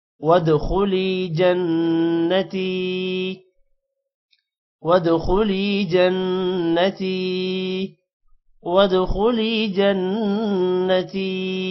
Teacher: لام کے بعد یا ہے تھوڑا سا لمبا کریں گے. وادخلی جنتی نون پر غنہ ہوگا.